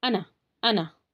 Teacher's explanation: قرآن میں جہاں بھی انا لکھا ہوا آئے تو آپ اس کو انا پڑھیں گے. ٹھیک ہے نا، اس کو لمبا نہیں کرنا ہے